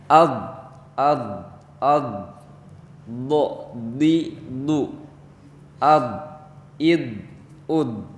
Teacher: Semuanya ditahan si udaranya, tidak dipantulkan. Itu huruf do.